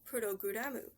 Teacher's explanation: they would have a U in the middle of all of the consonants and then a U at the end